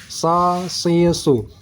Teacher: Sirata, sad tebal, si, jangan baca si. Jangan seperti sin, ini sa. Pangkal lidah naik ke atas.